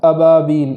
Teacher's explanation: وہاں حمزہ کو خوب جھٹکے کے ساتھ پڑھیں گے